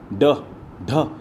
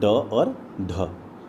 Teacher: उत्प्रेक्षी व्यंजन में क्या है ना, इनके उच्चारण में जिह्वा ऊपर उठकर झटके के साथ नीचे गिरती है